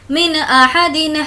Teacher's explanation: नून साकिन के बाद हमज़ा है तो नून की आवाज़ को ज़ाहिर करके पढ़ेंगे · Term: इजहार